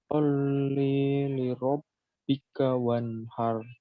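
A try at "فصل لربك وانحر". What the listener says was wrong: Ya, bisa ditirukan saya fasallili. Fasalli li rabbika wanhar. Fa-nya kedengeran. Fasalli Ayo, sekarang dihindari dengung pada la. Solli itu salah, tapi fasalli langsung. Fasalli li rabbika wanhar.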